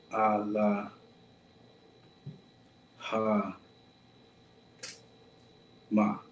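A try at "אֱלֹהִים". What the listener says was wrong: Sounds like you're skipping one. Close. Alahayim.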